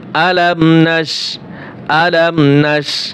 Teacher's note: মিম সাকিনের পরে নুন আসছে, গুণনা তো হবেই না, স্পষ্ট হবে।